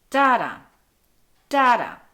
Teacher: so it's just the opposite of an I am in that it starts with a stressed beat and ends on an unstressed beat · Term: falling meter, trochee